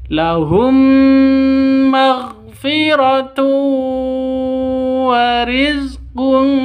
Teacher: Tanwin bertemu dengan wau. Cara bacanya masuk ke wawu disertai dengung dua ketukan. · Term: Idgham bighunah, idgham bi gunnah